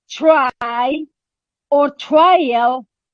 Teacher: rather articulated as a post alveolar sound for what reason because in its production the tip of the tongue approximates the border between the alveolar ridge and the palate · It is post-alveolar articulation. When T occurs before the liquid R, it is not aspirated. No, it is rather articulated as a post-alveolar sound.